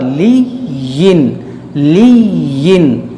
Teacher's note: یا مشدد ہے اس کو پڑھیں گے دو بار